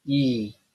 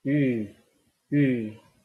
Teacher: You just keep the position of your tongue as in E. But this time, you are going to round your lips. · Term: rounded vowel